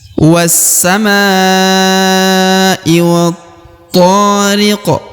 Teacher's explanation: Lalu kemudian huruf qaf yang di ujung diqalqalahkan atau dipantulkan karena dia berada di ujung bacaan atau di ujung ayat